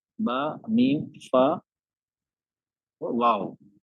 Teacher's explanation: हमारे हरूफ है जो हमारे लिप्स से निकलते हैं